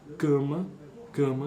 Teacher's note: existe uma eh uma consoante nasal a vogal anterior ela é nasalizada